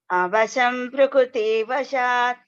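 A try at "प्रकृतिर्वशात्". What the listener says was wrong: Prakritir Vashat. Ir is there. Prakriti. Vashat. Avasham Prakritir Vashat. Avasham Prakratir Vashat.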